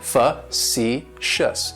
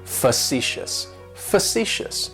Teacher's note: Facetious has 3 syllables, and the stress is on that second syllable. It's like you're just saying the letter C, facetious.